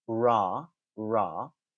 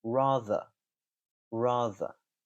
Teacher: I am going to pronounce the r at the beginning, ra, ra, but the er at the end, I'm not going to pronounce that r. Rather, rather.